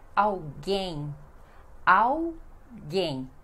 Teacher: Esse L sozinho também pronunciamos com som de U. E a sílaba mais forte é gen, então alguém.